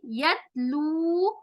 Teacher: होगा, मिनल्लाहि, यतलू, यत ता का मखरज हमने देखा था, ता, यत जबान की नोक सामने वाले दांतों के जड़ को छुएगी , यतलू लंबा करेंगे वाव मद्दा, सुहुफम, सू स्वाद मोटा होगा,